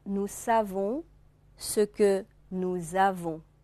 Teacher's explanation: 这个连诵以后，原来的▁s▁不发音的▁s▁发成▁z▁音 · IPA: [z]